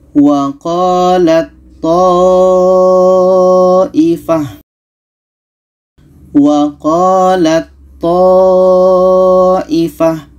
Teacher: Maka ta ini kita masukkan ke to. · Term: idgham mutajanisen